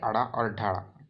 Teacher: इसके उच्चारण में जीभ पहले उठ करके मूर्धा को स्पर्श करते हुए झटके के साथ नीचे आता है, उसे उच्छिप्त व्यंजन कहते हैं।